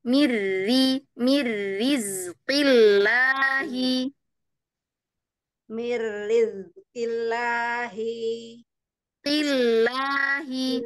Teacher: Dia karena hurufnya adalah huruf yang syiddah ya. Ya, huruf qaf ya. Maka dia terdengarnya itu tegas sekali satu harokatnya itu.